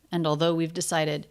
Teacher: The stress syllable of though really held out while he's thinking of how to articulate this.